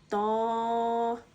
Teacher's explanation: تو ہم اس کو پوری یعنی موٹا پڑھیں گے، ضاد، طا، طا حرف مستعلیہ میں سے آتا ہے اسے ہم پوری یعنی موٹا پڑھیں گے